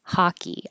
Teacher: it looks like an O, but it sounds like an ah.